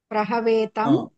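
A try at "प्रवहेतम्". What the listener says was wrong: అక్కడ మీరు ఉచ్చారణలో వహాకి బదులుగా హవాను పలుకుతున్నారు. మొదట బానే పలికారు. తర్వాత ప్రవహే ప్రవహ వా తర్వాత హ. మీరు పలకడంలో ఆ తర్వాత వా వస్తుంది.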